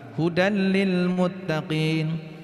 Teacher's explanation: Walaupun menurut teori tajwid, pembacaan dibaca hudan lil muttaqin ini pembacaan yang salah ya. Seharusnya ada idghamnya atau tanwinnya masuk kepada huruf lam.